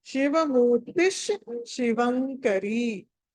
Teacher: ఆ 2 షాలు వినిపించాలి మనకి. ఏ ఒక్క షా కూడా వదలడానికి లేదు.